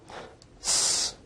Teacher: s is a voiceless alveolar fricative